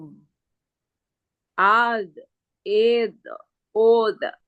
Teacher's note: Tanpa ada pantulan karena tidak termasuk kolkolah. Jangan ada, de-nya hilang.